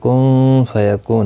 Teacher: نون ساکن کے بعد حروف اخفا کا فا اخفا حقیقی ہوگا، گنہ کے ساتھ پڑھیں گے